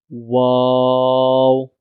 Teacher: Wow is the fourth one and the last one from the lips letters. Wow is read by the rounding of both lips. Round your lips and try to say wow.